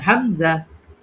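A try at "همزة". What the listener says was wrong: টান হবে না, এখানে কোনো টান হবে না।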